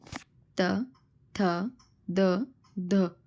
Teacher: તો એ કેવા છે દંત્ય દાંતમાંથી નીકળશે